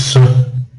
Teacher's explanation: If I say s, then I say a schwa sound after it. It's part of it, it's embedded. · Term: embedded schwa sounds